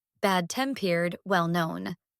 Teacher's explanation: in bad-tempered and well-known, the stress is on tempered and known, bad-tempered, well-known. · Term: compound adjectives